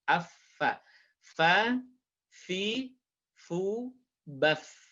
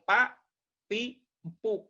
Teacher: bukan pak, tapi fa. Ada udara yang ngalir. Fa. Afa.